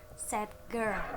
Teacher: when a d sound occurs before a g sound, convert into the g sound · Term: assimilation of place